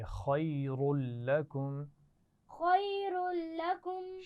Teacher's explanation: خیر میں را کو موٹا پڑھیں گے